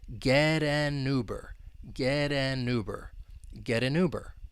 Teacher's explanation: that T in get, with the American accent, it comes between two vowels. It'll turn into a flap T, and then linking can occur. We can link that flap T with the vowel sound in an, and then we can link that final n sound with the vowel sound in Uber.